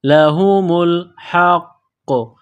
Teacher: ہا، میم کو لام کے ساتھ ملانا ہے، ہا کو قاف کے ساتھ ملانا ہے، نقطوں والا قاف ہے، موٹا کرنا ہے، قاف کے اوپر تشدید ہے تو قاف کو دبانا ہے، سختی کرنی ہے